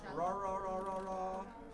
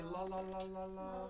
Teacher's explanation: Your tongue is just going further back to make the R than the L. The L is up towards the front, the R is in the back. And so people who come from another place that don't have the sustained R, they will oftentimes change the R for an L as their tongue gets tired.